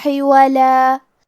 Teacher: آخری میں لام پہ تنوین زبر ہے، ہم یہ کلمہ پہ رکیں گے تو تنوین زبر پہ مد الف سے رکیں گے